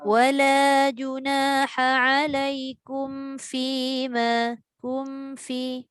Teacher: Kum tu kalau jumpa dengan fa tu, dia memang mim dengan fa ni dua huruf yang sama tempat keluar bibir kan. Cuma mim guna dua bibir, fa satu bibir.